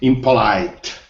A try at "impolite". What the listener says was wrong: Look at the big dot above the third syllable. The big dot. So the stress is on the third syllable, right? Say it again.